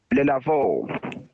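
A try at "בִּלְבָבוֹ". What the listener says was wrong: So I would say the first syllable is closed, ending with the lamed, dil. Together, all bilvavo.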